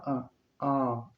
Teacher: ठीक है, बोलकर देखिए तभी स्पष्ट होगा। बड़ा आ, इसमें पूरा मुख द्वार जो है वह खुला है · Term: विवृत